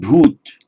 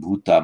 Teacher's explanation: they drop off the final a in modern Hindi